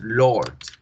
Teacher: Lord se pronuncia con este sonido. O fíjense muy bien cómo la R no suena